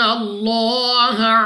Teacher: لام آف اللہ سے پہلے حرف پر زبر تو اس لام آف اللہ کو پر یعنی موٹا پڑھیں گے